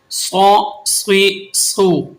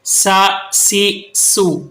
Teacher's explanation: صاد آپ نے مفخم یعنی موٹا کر کے پڑھنا ہے، سین اور زا کو آپ نے مرقق یعنی باریک پڑھنا ہے